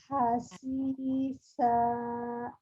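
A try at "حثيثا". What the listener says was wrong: Ini lidahnya terlalu tipis keluarnya. Ayo, lagi.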